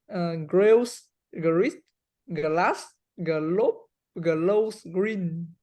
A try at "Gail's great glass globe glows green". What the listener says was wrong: I noticed one thing. You tend to say gl, gl. We don't.